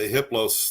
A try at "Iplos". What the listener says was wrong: The H is silent.